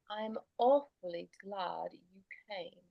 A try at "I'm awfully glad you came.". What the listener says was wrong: Better. Yes. Good.